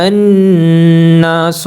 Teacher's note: الف سے پہلے زبر ہے، یہاں پر الف حرف مدہ ہے، زبر کو ہم 2 حرکات کے برابر لمبا کریں گے